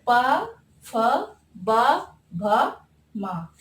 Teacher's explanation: इनका उच्चारण स्थान होट से होता है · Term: ओष्ठ